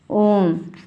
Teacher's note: प्लुत स्वर वे वर्ण जिनका उच्चारण करने में 3 मात्राओं का समय लगता है, स्पष्ट उसमें तीन मात्राओं का समय लगता है, उसे प्लुत स्वर कहते हैं।